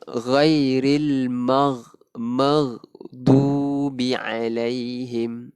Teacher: Sebenarnya huruf ghin bukannya huruf qalqalah. Jadi dia tak ada lantunan.